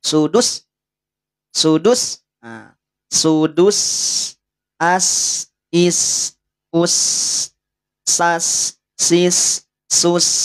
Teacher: Bisa alirkan nafasnya. Punya sifat hams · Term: Huruf sin